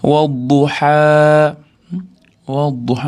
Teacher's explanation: vodan keyin dod shamsiy harf bo'lganligi uchun o'rtadagi alif ham, lam ham o'qilinmay kirib ketyapti. Ha keyin alif mat bor cho'zib to'xtamiz.